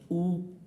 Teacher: তো উ যখন আমরা বলছি তখন উ, দেখো আমাদের মুখটা কিন্তু গোল হয়ে যাচ্ছে এবং ফুসফুস থেকে আসা বাতাসটাকে মুখটাকে গোল করে আমরা বের করে দিচ্ছি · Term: উ সাউন্ড